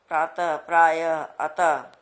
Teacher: विसर्ग का उच्चारण किस प्रकार होता है? ह की तरह होता है।